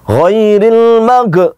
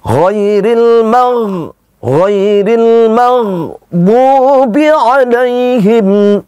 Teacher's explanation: Yang benar ghairil ditahan namun tidak memantul.